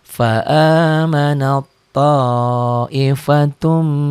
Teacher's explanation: ta ketemu th diidgamkan